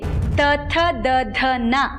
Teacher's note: ಅದೇ ನಾಲಿಗೆನ ಹಲ್ಲಿಗೆ ಒತ್ತಿ ತ ಥ ದ ಧ ನ ಅಂತೀವಿ